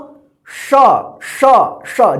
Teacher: जीभ जो है ना दोनों दांत के बीच में आता है तब इसका उच्चारण होता है स स, देखिए स स, जीभ आ रहा है ना दांत के बीच, इसका उच्चारण क्या होगा स, देखिए स और श, फर्क देखिए स दंत स, श श श, जीभ जो है ना तालु के ऊपर जा रहा है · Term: तालव्य श